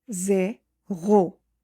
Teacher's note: If you notice the letter R, the sound of letter R comes from the throat. Imagine a soft gargle.